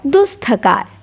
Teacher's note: विसर्ग के बाद थ आया तो दंत्य स में बदल गया